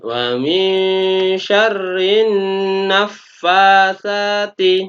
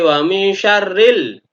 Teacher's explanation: Artinya alnya tidak dibaca. Langsung pada nunnya. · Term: alif lam syamsiyah